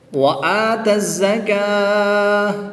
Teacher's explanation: وقف کی حالت میں گولتا کو ساکن کر دیں گے